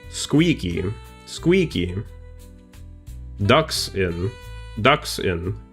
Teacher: It's stressed and then unstressed.